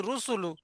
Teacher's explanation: লামের উপরে পেশ পেশটি হল হারাকাত হারাকাতের পড়ে তাড়াতাড়ি পড়তে হয় টান দেয়া নিষেধ